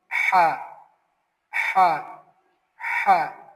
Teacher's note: Sound comes from the middle of the throat. No voice, only breathe. Say softly Ha.